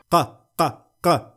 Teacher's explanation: حرف القاف مثلا يخرج من أقصى نقطة في اللسان